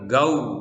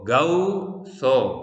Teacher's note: letter vav comes after the vowel a is pronounced as ഔ